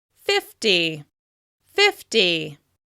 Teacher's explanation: 50 is stressed on the first syllable.